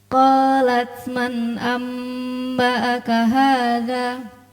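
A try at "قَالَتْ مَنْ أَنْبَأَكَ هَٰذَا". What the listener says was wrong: Hadza berapa harakat? 2. Bukan hadza, hadza, tapi hadza. Suaranya hilang, jangan ditahan. Ketika berhenti jangan di hadza, dihentak, jangan. Tapi suara hilang dengan sendirinya. Hadza, 2 harakat.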